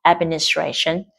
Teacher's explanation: trọng âm ở tray và trọng âm phụ ở ad